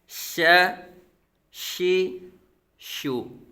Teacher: हरफे शजर जुबान के दरमियान और तालू के दरमियान से